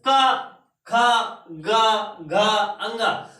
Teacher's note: जब आप का वर्ग को बोलते हैं तो आवाज जो होती है वो कंठ से निकलती है।